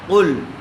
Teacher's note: دیکھیے قل، قاف کو پر کر کے پڑھیں ، قاف لام پیش، قل، قل إن كانت لكم الدار الآخرة